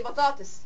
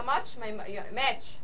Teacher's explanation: لو الساكن ساكن ده انفجاري وده احتكاكي يبقوا افريكت، لازم يبقوا لازقين في بعض